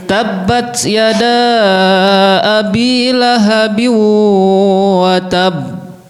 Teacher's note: ketika qalqalahnya ada tasdidnya, ketika berhenti berdijeda dulu baru mantul ya.